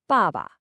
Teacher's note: It's almost like a gentle, firm statement. The second syllable is neutral, so it's super light and unstressed.